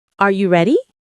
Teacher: when a native speaker asks a yes or no question like, Are you ready? the pitch of their voice goes up at the end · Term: intonation